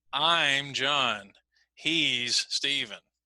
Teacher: so notice I put focus on I'm